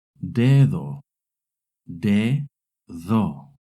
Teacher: When the D is between two vowels, it makes a soft D sound, similar to the TH in English.